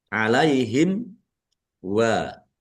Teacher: mim sukun bertemu dengan huruf wau. Bacaan izhar syafawi dibaca jelas.